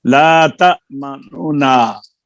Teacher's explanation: और यहाँ पर चलो आपको फिर बताया था मैंने कि नून में अगर इदगाम ना करें इजहार भी हो सकता है, लेकिन जब इजहार करेंगे तो पहली नून की पेश तीसरा हिस्सा ज़ाहिर करेंगे